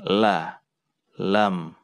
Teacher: Lam ini tergolong mudah kita ucapkan karena hurufnya juga ada pada abjad Indonesia, yaitu huruf L ya, jadi sama saja L, la, lam, lam. Ujung lidah diangkat ke gusi bagian atas, kemudian diucapkan la, lam. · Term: huruf lam